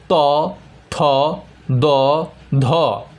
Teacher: 2 নম্বরে দন্তধ্বনি। জিভের ডগা উপরের পাটি দাঁতের পেছনের অংশকে স্পর্শ করে বায়ু পথে বাধার সৃষ্টি করলে দন্তধ্বনি উচ্চারিত হয়